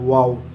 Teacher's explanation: वाव का मखरज है दोनों होठों के किनारे जबकि मुंह गोल हो जाता है और बीच में सुराख बन जाता है